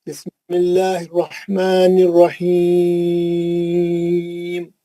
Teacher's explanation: دیکھیں یہاں بسم اللہ الرحمن الرحیم آیت ختم ہے وہ, اور ہیم میں مد اصلی موجود ہے. میم پہ زیر ہٹا کے آپ ساکن کریں, مد عارض ہو رہا وہاں پہ